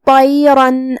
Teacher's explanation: طا کو بھی ہم بھاری آواز میں ادا کریں گے کیونکہ وہ حروف التفخیم میں سے ہے